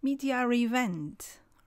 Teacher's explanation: there's an r intruding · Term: intrusion, Intrusion